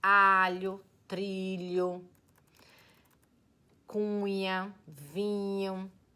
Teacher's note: Quando ele está ligadinho com um L ou com um N, produz um som que os gramáticos chamam palatal, como nas palavras alho, trilho, cunha, vinho.